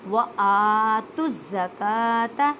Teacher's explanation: اب دیکھیں تا کو زا مشدد کے ساتھ ملائیں، زا کو مضبوطی سے پڑھیں